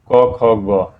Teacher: ग का उच्चारण स्थान क्या हुआ कंठ